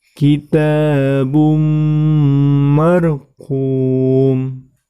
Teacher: Yang perlu diperhatikan adalah situ yang berwarna coklat, tanwin, tepatnya domah tanwin bertemu dengan mim, maka itu termasuk hukum bacaan idgham bi ghunnah. Maka cara membacanya dengan mendengung.